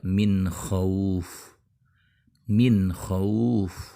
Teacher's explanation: bertemu dengan huruf ha seperti di kata Min khauf Min Ho bunyi n harus dibaca jelas karena Kho juga termasuk huruf tenggorokan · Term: izhar